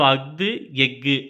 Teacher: ஆயுத எழுத்து தனக்கே உரிய அரை மாத்திரை அளவில் முழுமையாக ஒலிக்கிறது